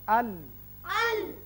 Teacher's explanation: زبان کا اگلا سرا اور لام میں پہلے چاروں جو دانت ہیں ان کے ساتھ لگنے سے یہ لام ادا ہوتا ہے